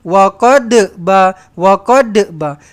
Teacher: Dia sebut huruf dad, dia pergi pakai lidah depan.